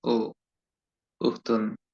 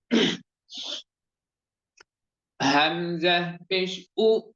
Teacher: হামজা অক্ষরটির উচ্চারণ মুখ খুলে আওয়াজ করে শক্তভাবে ধাক্কা দিয়ে ফলকের প্রথম দিক থেকে ধমকের স্বরে হামজা পেশ উ, উচ্চারণ যাতে এমন না হয় যে উ, অলসতা ভাব নিয়ে নয় বা মানে আলসে ভাবে নয়, অ্যাক্টিভলি বলতে হবে, লাউডলি বলতে হবে।